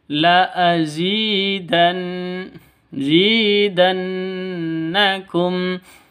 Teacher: Zi panjang dua ketukan. Kenapa? Karena ada ya mati diawali dengan kasroh. Atau ya mati sebelumnya ya mati itu ada kasroh, seperti itu. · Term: mad asli